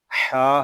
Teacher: آتا کا، ہا زبر ہا، ہا حلق کے درمیان والے حصے سے ادا ہوگا۔